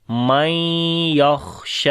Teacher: کے بعد یا آ گیا، ادغام غنے کے ساتھ کریں گے، خا کے اوپر صفت ہمس ہے، سانس کو جاری کریں گے اور شین کے اوپر کھڑی زبر ہے، لمبا کر کے پڑھیں